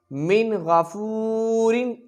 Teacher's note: میم نون زیر من، غین زبر غا، من غا، فا واو پیش فو، من غفو، را دو زیرن، من غفورن، اظہار ہوگا، غنہ نہیں ہوگا، واو مدہ، را باریک پڑھی جائے گی